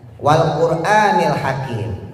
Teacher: Rohnya dibaca tafkhim tebal.